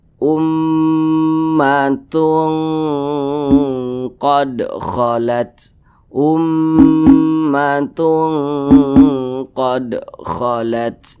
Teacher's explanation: jadi cara membacanya itu disamarkan kemudian juga didengungkan akan tetapi dengungnya itu dia lebih dominan lebih dominan atau lebih tinggi jadi lebih condong berbunyi Eng · suaranya itu kita tahan kita panjangkan panjangnya itu dua harakat atau kira-kira dua ketukan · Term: ikhfa Hakiki ab'ad, ikhfa hakiki ab'ad